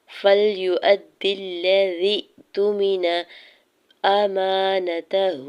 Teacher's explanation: ہا کے اوپر الٹا پیش ہے، دو حرکت کھینچ کے ادا کریں گے